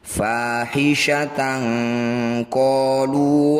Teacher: fathah tanwin bertemu qof disebut bacaan Ikhfa tepatnya yaitu ikhfa ab'ad cara bacanya bunyi fathah tanwin ini dengungkan dua harakat saat dengung bunyikan e fahisyatan qolu wajadna alaiha abaana ada layar